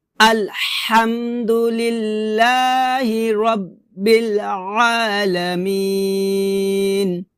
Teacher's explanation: আইনটাকে গলার মাঝখান থেকে চাপ দিয়ে উচ্চারণ করতে হবে